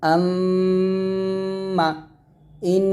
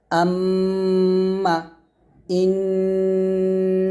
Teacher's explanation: 17 নং মাখরাজ নাকের বাঁশি হইতে গুন্নাহ করিয়া পড়িতে হবে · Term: ওয়াজিব গুন্না